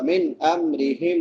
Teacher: را کے نیچے زیر ہے باریک ہوگی